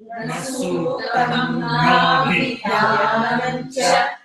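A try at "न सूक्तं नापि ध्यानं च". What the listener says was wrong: Na pi. P is short. Na pi. It is not B. Especially Tamil script, you have to be very careful. Na pi.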